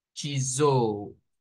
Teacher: se convierte esta S en la S vibrante, en z